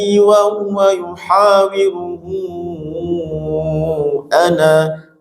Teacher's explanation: Ketika berhenti di ana, ananya panjang punya itu mad silah thwilah